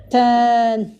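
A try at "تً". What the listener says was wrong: Par contre, ne prolonge pas.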